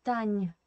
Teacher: You should say Tanya with a small, small ghost E.